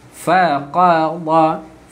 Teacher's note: Qa dekat pangkal lidah, dad dekat tepi lidah. Pangkal lidah, tepi lidah.